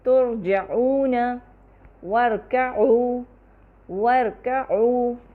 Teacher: ان تمام الفاظ میں دیکھیے را میں وائبریشن یا تکرار بہت زیادہ اور بہت کم دونوں نہیں ہے۔ را میں توسط ہے اور تکرار بھی اس توسط کو مزید سپورٹ کرتی ہے۔